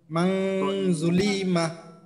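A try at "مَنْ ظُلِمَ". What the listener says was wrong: হ্যাঁ, জুলি কিন্তু টান হয়ে গেল, টান দেওয়া যাবে না। মাং জুলিমা, মাং জুলিমা, জুলিমা।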